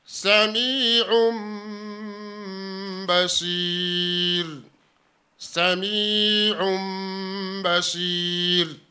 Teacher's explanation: Ile tanwini iliyoko juu ya aini inageuzwa kuwa mim yenye sakin, kwa hiyo inakuwa sami'un basir. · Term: iqlab